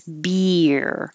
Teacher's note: so you could have a bear bear a naked bear now your tongue has to go very high for the E and then slide down for the r and so that's when the the Y happens beer and if